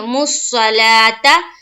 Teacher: صاد کو منہ بھر کر نکالیں گے، مُصَّلَاةَ، لام کے اوپر کھڑا زبر ہے، 1 الف کے باقدر کھینچنا ہے، تا کو جلد ادا کریں گے۔